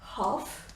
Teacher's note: So half, we don't say it like that. L is silent here